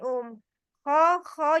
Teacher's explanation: Kalau kho iya dia pangkal tenggorokan yang atas. Dirasain Kho, jadi ada sedikit kotor itunya.